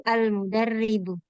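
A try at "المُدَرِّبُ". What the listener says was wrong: Oke, alhamdulillah.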